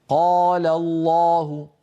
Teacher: بينما لما أقول قال الله هنا الألف التي بعد القاف تركت القاف تأخذ حظا أكبر من التفخيم